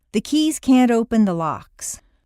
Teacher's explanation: If you have trouble with can't before a word that starts with a vowel, such as open, put in a very small d.